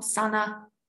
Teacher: High tone on a short vowel